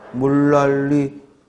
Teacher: 유음화가 일어나서 리을 리을 리을 리을 맞죠? 니음과 리을이 만나면 일단 유음화 리을 리을이 일어난다